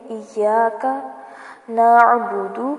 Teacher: کاف کو لمبا نہیں کرنا، ایاکا نہیں کریں گے، ایاک نعبد، دال کو بھی لمبا نہیں کرنا، نعبدو نہیں پڑھنا، نعبد، دال کو جلدی سے پڑھ کے چھوڑ دیں۔